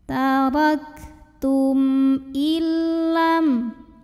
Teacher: Maka cara membacanya mim sukun ini dibaca dengan jelas. Bunyi M-nya tidak perlu ditahan. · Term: idhar syafawi